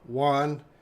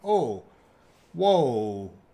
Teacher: That's actually two. Your mouth is moving twice to make the O sound.